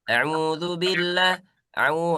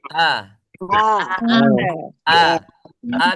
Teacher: Naam. Itu ada ain ya harus dibedakan. Hamzanya harus jelas. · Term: Hamzahnya